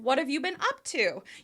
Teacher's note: You're going to rise to that up and then drop right at the end because it's an information question.